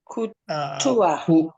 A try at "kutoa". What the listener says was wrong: No. There's no two there. It's to. No, it is kutoa. Kutoa.